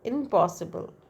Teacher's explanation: So when n becomes m before p, impossible. In plus possible, impossible. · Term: assimilation